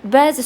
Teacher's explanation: Bəzi sözündə ə səsi həm uzanır, həm vurğu qəbul edir. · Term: səs uzanması və vurğu